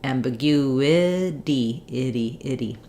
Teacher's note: we don't want a strong D there but we do have the voice on and a little flap · So in words that end with ity, you want to watch out for making sure you have a lax I and then a tense E, even though they both go by fast. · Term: flap T